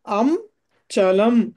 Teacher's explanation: ఆ అనుస్వారం తర్వాత చ వచ్చింది కాబట్టి చవర్గంలోని పంచమాక్షరం వస్తుంది